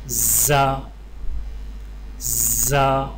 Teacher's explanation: زا کی ادائیگی میں زبان کی نوک کو سامنے والے نیچے کے 2 دانتوں کے کناروں سے مضبوطی سے لگا کر باریک اور سیٹی کی آواز میں پڑھیں، یعنی زا زا۔